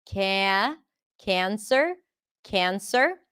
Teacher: Cancer is also the a as in cat, but before an n sound, so it turns into an eh